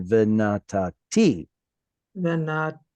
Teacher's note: instead of putting the stress on the first tav, put it on the last one